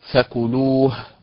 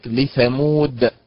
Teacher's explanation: إذن النبر في فكلوه على حركة اللام، وفي لثمود على حركة الميم